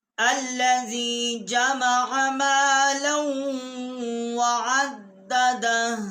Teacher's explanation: الٹا پیش ہے، اور ہم یہاں آیات ختم ہو رہی ہے، وقف کریں گے تو یہ ہا کا مخرج آئے گا، باقی اس کا پیش جو ہے وہ نہیں پڑھا جائے گا